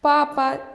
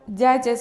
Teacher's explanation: Papada qattiq aytilyapti. Dядяda yumshoq talaffuz qilinyapti.